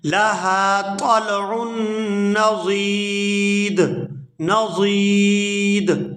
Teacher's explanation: دال کے اوپر جب ہم وقف کریں گے تو یہ ساکن ہو جائے گا، اور جب یہ ساکن ہوگا تو یہاں وقف کی صورت میں یہاں پر قلقلہ کبیر ہوگا، یعنی بڑا قلقلہ